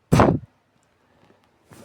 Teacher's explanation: bringing the lips together to completely stop airflow, then releasing the air in a sudden burst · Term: voiceless bilabial stop